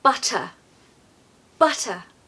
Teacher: In the modern RP British accent, which can be found in the south of England, we have a very strong T sound. Compared to the American accent, it really is very pronounced. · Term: double te